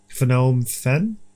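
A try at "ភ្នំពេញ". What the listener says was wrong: No, because they wouldn't pronounce the N. Phnom Penh, I think.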